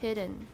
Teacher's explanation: when a voiced stop and a nasal occur in the same word as in hidden the stop is not released in the usual way both the and then our alveolar con consonants the tongue comes